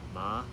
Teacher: you have the first tone which is the high pitch tone. It's very level drawn with the line above the top.